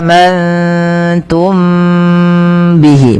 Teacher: Kalau mangtum maka dia berubah daripada makhrajnya. Kemudian mim mati bertemu ba, ini ditahan teman-teman, suaranya ditahan. Amantum bihi, bukan hanya sekedar amantum bihi. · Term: ikhfa syafawi